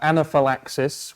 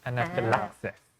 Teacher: anaphylaxis with the stress on the 4th syllable